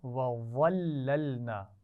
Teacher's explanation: وَظَلَّلْنَا وا کو موٹا پڑھا جائے گا، لیکن اس کے بعد جو لام ہے ان کو موٹا نہیں پڑھنا